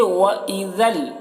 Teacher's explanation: ذال کو لام سے ملا کر پڑھیں گے ، یہاں پر ذل میں ادغام تام ہو رہا ہے، بغیر